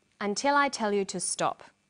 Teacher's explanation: did you hear the falling tone at the end · falling tone in English statements usually end in a falling tone the falling tone at the end tells the listener that the statement is finished